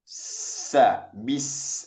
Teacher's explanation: Ada suara desisan yang sangat tajam sekali di sana, maka itu namanya sofir.